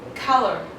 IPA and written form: ˈkʌlə (colour)